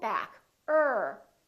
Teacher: the tip of the tongue is not touching it's just pulled back curled up a little bit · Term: American R